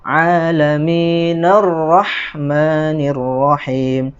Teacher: jadi Hamzah washol itu ketika di tengah-tengah ya maka diabaikan saja dia tidak perlu dibaca